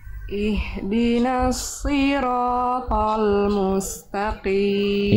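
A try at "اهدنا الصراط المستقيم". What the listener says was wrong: Ya, sedikit lagi coba Bunda lafalkan huruf shadnya lebih tebal lagi. Angkat pangkal lidah. Coba Bunda ikuti saya. Si. Dirasakan lidahnya didorong lagi ke dalam Bunda. Bayangkan Bunda lagi mau nelan sesuatu.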